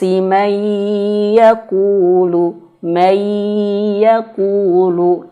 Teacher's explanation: Nah, ini keliru, Teman-teman. meskipun udah ditahan tapi tidak sengau